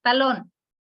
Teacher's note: Talón tiene dos sílabas, la sílaba tónica está en la última, que es lón.